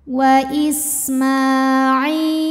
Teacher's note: wa Isma Ma Mad Thobi'i muqaddar karena mimnya berbaris fathah berdiri maka cara bacanya kita panjangkan mimnya dua harakat saja